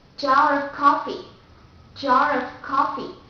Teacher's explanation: For example, the word jar of coffee, jar of coffee, because the R sound goes before a vowel, so we have to pronounce it like jar of coffee.